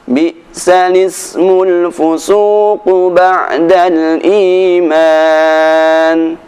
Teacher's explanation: Karena al-ismu ini merupakan hamzah wasal, maka suara i tidak perlu dibaca. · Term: naql